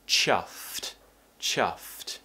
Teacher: Of course, you need to try and pronounce the cluster at the end, ft. Top teeth on the bottom lip and cut it out with a t sound.